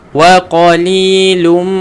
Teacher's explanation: Wa qa tebalkan, li 2 harakat, ada huruf ya. · Kenapa saya dengung? Sebab ada mim yang bersabdu.